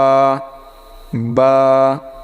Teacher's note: দুই ঠোঁটের মাঝখান থেকে উচ্চারণ হবে বা, অর্থাৎ দুই ঠোঁট একত্রে করে তারপরে বা